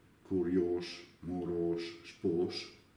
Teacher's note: la s è sempre sorda sia quando indicata con S